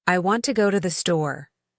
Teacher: Notice how want, go, and store are stressed? Everything else is quickly reduced. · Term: stress-timed